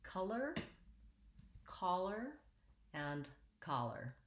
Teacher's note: all of these words are stressed on the first syllable